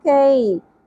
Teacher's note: فستعلمون کئی, یا ساکن سے پہلے زبر, حرف لین نرمی سے, کی نہیں پڑھنا, کئی.